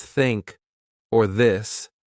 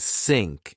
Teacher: I put my tongue gently between my teeth. I blew air.